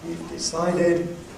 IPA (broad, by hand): We've deˈcided